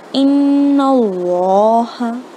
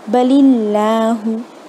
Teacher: लफ्ज़ अल्लाह के पहले अगर फतहा और दम्मा हो तो हम उसे मुँह भर के पढ़ेंगे